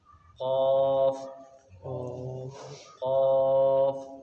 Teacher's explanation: قاف زبان کی جڑ اور تالو کے نرم حصے کو ٹچ کریں گے آپس میں تو یہ قاف نکلے گا